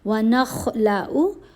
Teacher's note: خا کو موٹا پڑھنا لیکن ساری آوازیں چھوٹی ہیں، کسی کو کھینچنا نہیں